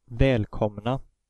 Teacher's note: the O has the short vowel pronunciation, even though it's only one M following it.